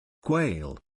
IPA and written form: kweɪl (Quail)